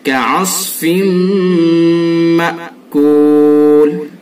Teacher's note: اس کے اندر بھی ادغام ہوگا، یعنی ادغام ناقص، ادغام بالغنہ